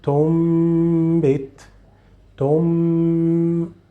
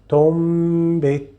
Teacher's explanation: here you are changing the sound from noon to meme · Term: ghunna